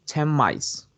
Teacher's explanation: In the case of the clause 10 mice, both sounds are nasal. But here, the sound n takes the bilabiality of the following m, becomes the two sounds in just one.